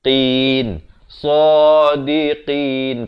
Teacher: qaf makhrajnya di pangkal lidah